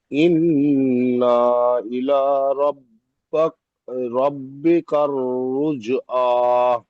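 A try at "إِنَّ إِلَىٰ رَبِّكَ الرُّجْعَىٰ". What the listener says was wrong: জি ইন্নাটা একটু টান হয়ে যাচ্ছে, এটা গুণনা করবেন, টান দেবেন না। ইন্না ইলা, না টান হয়ে যাচ্ছে, ইন্না ইলা।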